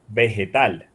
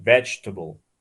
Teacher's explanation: in so you say we say vegetable but the first phony the first vowel was the strong one the rest of them were just drowning afterwards